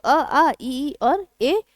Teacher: अवृतमुखी मतलब अगोली, जिसमें होंठ गोल नहीं होते